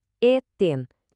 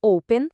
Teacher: Quando as vogais e o são longas, elas têm um som bem fechado. O E soa como o nosso E de você, como na palavra eten, que é comer.